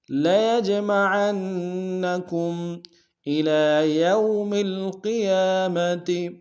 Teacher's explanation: عین کو نون کے سامنے ملائیں گے، شد ہے زور دیں گے۔